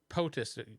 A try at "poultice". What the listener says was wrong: Poultice. There's a L.